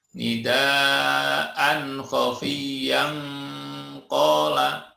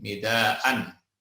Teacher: tanwin bertemu dengan kha, ini disebut idhar halqi, dibaca jelas